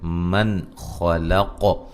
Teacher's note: یہاں نون ساکن کا اظہار ہے، غنہ نہیں کریں گے، خا اور قاف کو موٹا ادا کریں گے